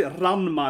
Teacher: We put in a little roll in the R, and then we do a long A and a short A.